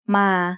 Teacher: sara is a long vowel that makes the sound a like the A in father.